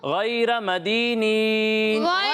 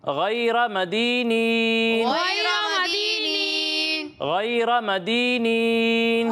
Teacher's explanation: را کو پر پڑھنا ہے